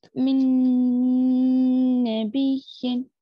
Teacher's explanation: नून को नून में मिलाकर गुन्ना करेंगे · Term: इदगाम नून